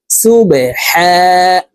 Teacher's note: হা হরফ হলকের মধ্যখান থেকে উচ্চারণ করব